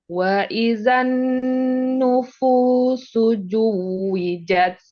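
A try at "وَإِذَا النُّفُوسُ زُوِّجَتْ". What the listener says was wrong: Itu masih J lagi. Ya, suzu bukan suju.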